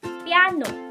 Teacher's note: ang unang pantig Ay mabilis siyang bigkasin kaysa sa ikalawang pantig ngunit tulad ng ipinahihiwatig ng pangalan na ito dalawa ang patinig · natin na nahahati dalawang pantig ang kambal patinig at sa ikalawang pantig nandun yung diin o dulig